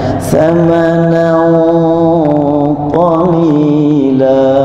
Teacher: ada yang tebal bacaannya, samanan qalila, bukan samanan, itu tipis, harus tebal. Samanan ka. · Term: gunnah